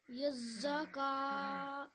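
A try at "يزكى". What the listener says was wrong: So you put the emphasis on the za, but remember the qaf is the one that has the shadda. So yazakka. Yazakka.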